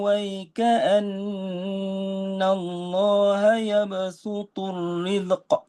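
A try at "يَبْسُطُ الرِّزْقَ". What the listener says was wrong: rizq bukan zal zai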